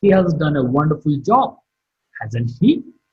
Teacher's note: Job marked with a falling tone